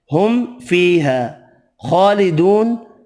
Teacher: خا حروف مستعلیہ پر پڑھیں گے، کھڑی زبر واو مدہ 1 الف کی مقدار میں کھینچ کر پڑھیں گے، نون ساکن پڑھیں گے وف کی صورت میں۔